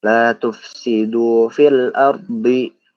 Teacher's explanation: ro ini hukum bacaannya itu adalah tafkhim. Nah, makanya ketika kita baca huruf ar itu tebel ya. Pas kita masuk ke huruf ro-nya itu tebel.